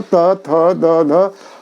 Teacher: और तथा दध जो है, ये आप तथा दध बोल के देखो, त थ द ध, हर एक वर्ण के उच्चारण में जीभ दांत को स्पर्श कर रहा है